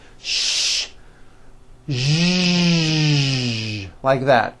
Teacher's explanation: To produce this sound, first make a sh sound, and then you add voicing. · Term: voiced SH sound